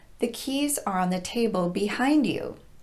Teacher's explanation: Here, we want the person to turn around and look at the keys on the table. So we're stressing the preposition behind.